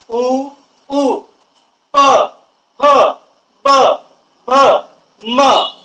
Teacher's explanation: या वर्णांचा जेव्हा तुम्ही उच्चार करत असता त्यावेळेस ओठांचा वापर करावा लागत आहे. तुम्ही जर तुमचे दोन्ही ओठ जर धरून ठेवला आणि यांचा जर उच्चार करायला बघलात तर उच्चार मुळीच होणार नाही.